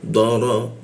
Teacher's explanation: ro posisinya di bawah hidung pakai ujung lidah